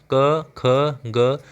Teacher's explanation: जो क वाली सीरीज है इसका जो उच्चारण है वो हमारे कंठ से होता है।